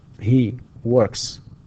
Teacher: لاحظوا أنه هنا ك, which is a voiceless sound, and the s here is also pronounced, or it is also voiceless, because it agrees, it has to agree with the phonetic features of the final sound in the word or in the verb work